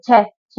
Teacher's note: आपके मुंह से एकदम से हवा निकली